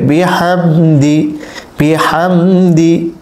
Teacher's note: এখানে মিম সাকিনের পরে দাল এসেছে, স্পষ্ট করে পড়তে হবে, কোনো রকম গুণনা করা যাবে না।